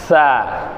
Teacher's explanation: நுனி நாவை முன்பற்களின் முனையில் லேசாக சேர்த்து காற்று வெளியாகும் முறை உச்சரித்தல்